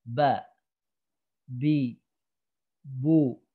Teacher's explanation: maka inilah makhraj tempat keluarnya huruf ba, yaitu dari bibir atas dan bawah